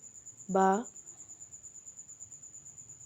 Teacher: बा होठों के तर हिस्से से अदा होता है।